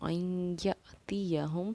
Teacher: हमज़ा साकिना होने की वजह से हमने यहाँ झटका किया, और यौमन का कायदा या फिर इदगाम नाक़िस का कायदा होने की वजह से हमने इस आई पर इख्फा भी किया और गुन्ना भी किया।